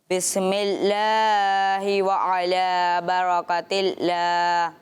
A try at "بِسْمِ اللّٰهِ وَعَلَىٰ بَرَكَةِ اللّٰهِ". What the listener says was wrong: अच्छा, बिस्मिल्लाह, अच्छा सीन को भी हिलाना भी नहीं होता, देखें इसका कवायद का भी ख्याल रखें ना अच्छे तरीके।